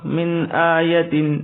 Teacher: ما ننسخ من آیت، من یہاں اخفا نہیں ہوگا، یہ حرف حلقی ہے